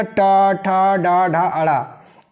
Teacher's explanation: इनका उच्चारण स्थान है मूर्धा। इनको बोला जाता है मूर्धन्य वर्ण।